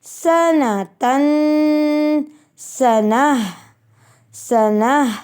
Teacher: ہم نے پھر گول تا کو وقف کی صورت میں گول ہا میں بدل دینا ہے